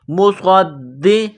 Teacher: بِإِذْنِ اللَّهِ مصدقا، صاد میں سیٹی کی آواز پیدا کریں گے، صاد کو موٹا کریں گے، صاد کو دال کے ساتھ ملانا ہے، دال میں سختی کرنی ہے